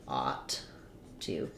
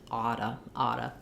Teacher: That sounds like ought to. But in connected speech, we typically link these together, only make one T, and we reduce the oo to a schwa, so it sounds more like oughta. Because if I'm saying I ought to, then I'm going to say that T sound because I'm not linking them.